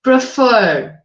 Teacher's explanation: eu tenho fur como a sílaba tônica mais forte